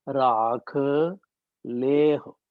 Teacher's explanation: ਲਾਂ ਨੂੰ ਵੱਡਾ ਕਰ, ਪਹਿਲੇ ਅੱਖਰ ਦੀ ਮਾਤਰਾ ਨੂੰ ਵੱਡਾ ਕਰ ਦਿਓ ਤੇ ਹਾ ਆਪੇ ਛੋਟਾ ਹੋ ਜਾਏਗਾ